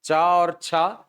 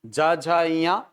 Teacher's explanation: च और छ अघोष ज झ ञ सघोष